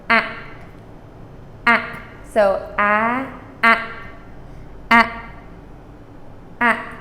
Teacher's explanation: it's a very short a and it is cut off with the back of your throat so you simply contract the back of your throat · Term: glottal stop